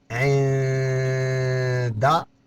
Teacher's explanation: عین نون زیر عین، دال زبر دا، یہاں نون ساکن کے بعد دال آ جائے گا، دال آ رہا ہے، یہاں اخفا ہوگا